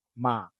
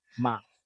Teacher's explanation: Again, the midtone in Thai is flat. You just drag the word out. Especially if it's a long vowel.